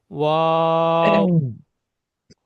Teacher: ওয়াও উচ্চারণ হবে দুটো ঠোঁটের দিকে, দুটো ঠোঁট দিয়ে। ওয়াও, দুটো ঠোঁটে দুই সাইডে মিলে যাবে, মাঝখানটা খালি থাকবে।